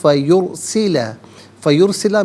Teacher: فا علیحدہ، یرسلہ علیحدہ ملا کر پڑھیں گے. فیرسلہ، فیرسلہ میں را ساکن ما قبل یا پر پیش ہے، تو را ساکن کو پر کر کے پڑھیں گے